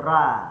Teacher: Kalau kita kata lebih dekat kepada A, mesti kita baca ra. Ra jadi nipis. Kita nak ra tu tebal.